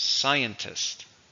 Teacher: 3, stresses on the first.